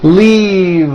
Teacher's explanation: The word is leave with a voiced V. Keep the voicing going throughout the whole word and voice the V.